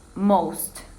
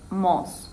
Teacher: she couldn't pronounce the word most. She said mos without the T sound.